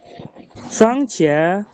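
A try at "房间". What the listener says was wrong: Nadanya jangan satu dong. Fangjia. Iya, ini ketutupan ya. 4.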